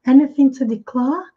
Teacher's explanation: no momento que eles não pronunciam o R no final, eles prolongam um pouco mais a vogal. Anything to declare, declare, ok?